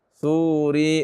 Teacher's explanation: Nah, ri-nya jangan dipanjangkan ya.